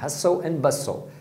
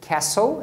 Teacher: nos dois casos tem o T que você não pronuncia